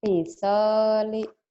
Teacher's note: Pi-nya pendek. Yang panjang so-nya.